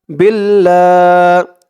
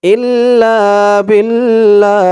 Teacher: আল্লাহ শব্দের ডানে জের আসছে তাই আল্লাহ শব্দের লামটাকে লা উচ্চারণ করেছি